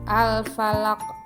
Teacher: bunyi huruf lam pada lafaz Al-Falaq dibaca jelas dan dinamakan alif lam qamariyah. Al-Falaq, bunyi huruf qaf pada akhir lafaz dibaca memantul dan dinamakan qalqalah kubro.